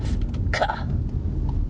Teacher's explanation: you're hitting the spot in your mouth between the hard palate and the soft palate with your tongue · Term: unvoiced velar plosive